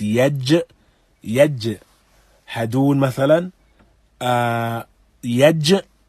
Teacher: the middle of the tongue raises and meets the upper palate